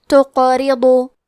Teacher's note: ان تقرضو، کلمت تقرضو میں قاف پہ جزم ہے تو ہمیں قاف کو قلقلہ سے پڑھنا ہے۔ قلقلہ کا معنی ہے حرف ساکن کو ہلانا، تو ہم حرف القاف کو ہلاتے ہوئے یہ کلمہ کو پڑھیں گے